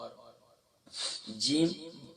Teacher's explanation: middle of the tongue middle of the palate